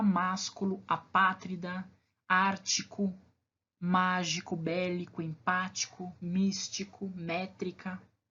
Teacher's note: a antepenúltima sílaba e será a sílaba mais forte no caso das proparoxítonas